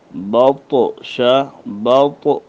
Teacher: یہ طا کو ہم نے موٹا کیوں کیا اور اس پر ایک قسم کا جھٹکا کیوں ہے؟ موٹا اس لیے کیا کہ اس میں استعلاء ہے اور اس پر جھٹکا اس لیے آ رہی ہے کہ اس میں قلقلہ ہے